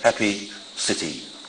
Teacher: The happy vowel is the one that occurs at the end of happy, city, and so on, a short E vowel. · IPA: [i]